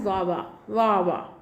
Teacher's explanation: a child might pronounce the word water as wawa, right. So water as wawa, because T sound is changed to W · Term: partial dissimulation